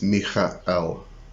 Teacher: So if you were to read it, it would be M-I-C-H-A, and then there's a little guttural stop like an apostrophe, and then E-L. So you don't, when you're actually saying the name, you don't actually notice that guttural stop.